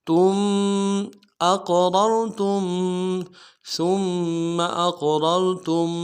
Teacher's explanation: تا کو میم ساکن کے ساتھ ملانا ہے، میم ساکن میں غنہ کریں گے